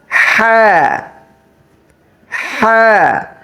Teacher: হা গলার মাঝখান থেকে উচ্চারণ হবে